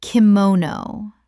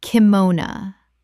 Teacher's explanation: Three syllables with the final o reduced to uh in English speech.